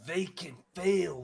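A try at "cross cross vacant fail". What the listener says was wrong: you have to make sure to pronounce the uh the crosses in there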